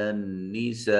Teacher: علی النساء نون مشدد ہے، غنہ واجب ہوگا